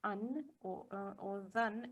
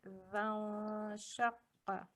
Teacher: So we hide the nun partially. We make a slight nasalization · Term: ikhfa